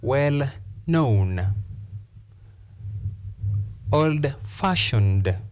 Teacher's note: Compound adjective, stress the second part.